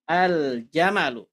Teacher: Lamnya dibaca jelas karena alif lam bertemu dengan huruf qamariyah yakni jim. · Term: alif lam qamariyah